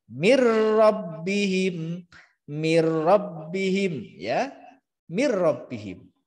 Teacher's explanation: Yang betul min rabbihim harus dibaca mir rabbihim. Ya, nunnya masuk ke ro. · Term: idgham bila guna